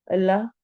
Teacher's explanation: अल्लाह वाले इसमें जलाला के लाम को हम मोटा पढ़ेंगे